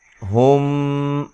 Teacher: یہاں میم ساکن کا اخفا ہے